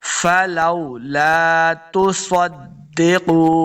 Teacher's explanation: صاد حروف مستعلیہ سے ہے، اس کو موٹا کر کے پڑھنا ہے